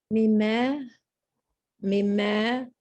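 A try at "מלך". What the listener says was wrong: Now, the second one, don't forget to get that last letter in.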